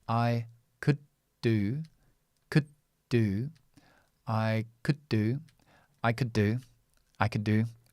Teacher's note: the way to pronounce this word is very very quickly and join it to the next verb here which is do